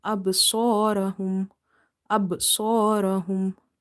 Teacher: Ba is having qalqalah, but weak qalqalah. Swad is heavy, ra is heavy.